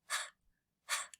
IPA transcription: h